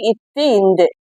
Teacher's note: மேல்வாய் பல்லின் அடியை நாக்கின் நுனி பொருந்துவதால் பிறப்பது